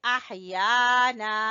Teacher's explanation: ہا کو گلے کے درمیان سے